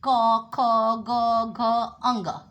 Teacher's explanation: तो लेकिन इसका उच्चारण स्थान का विशेष महत्व होता है। कवर्ग जो होता है वो कंठ से बोली जाती है